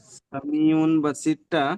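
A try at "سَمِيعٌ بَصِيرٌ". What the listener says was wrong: উন নয়, মিমের সাথে বলেন, মিম সামি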